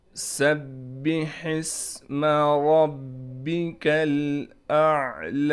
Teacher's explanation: ہم نے سین کو سیٹی کے ساتھ نکالنا ہے